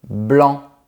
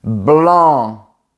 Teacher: en France, on dit « blanc » avec une nasalisation assez légère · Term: voyelles nasales